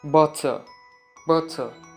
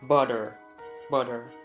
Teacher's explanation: us Brits, we pronounce the T. We don't change it to D.